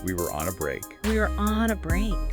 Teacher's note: See how were and on kind of blend together?